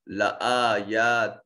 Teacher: تا کے نیچے تنوین اور تا منون ہونے کے بعد حروف یرملون میں سے لام ہے، ادغام بغیر غنہ کے ہوگا۔ لآیات تا کو لام سے ملاتے ہوئے آواز ناک کے نتنوں میں نہیں جائے گی۔